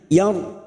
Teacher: ra sukun yang sebelumnya fathah kita baca tafkim, yar seperti orang cemberut posisi bibir kita karena dibaca tafkim maka bunyinya yar.